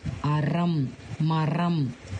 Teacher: வல்லின ரகரத்தை கொஞ்சம் நாக்கை மடித்து அழுத்தி சொல்லணும்